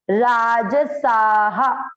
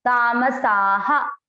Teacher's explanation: आ की मात्रा है इसलिए विसर्ग को पढ़ा हा